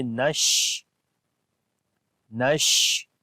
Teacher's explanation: another quality which is called Tafashi, like we spread the Sheen sound into our mouth as we say Nash.